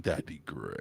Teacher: the first male vocal fry I've ever heard